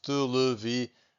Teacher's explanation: To get these nasal sounds, I'm breathing out using my mouth and also my nose. Televisão. So I can feel my nose vibrating a little bit.